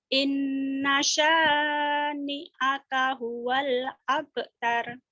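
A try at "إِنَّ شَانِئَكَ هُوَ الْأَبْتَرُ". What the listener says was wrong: Inna sinnya gede. Inna shin. Inna syani'aka huwal abtar.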